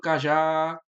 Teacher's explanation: perceba que o já é a sílaba forte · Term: acento tônico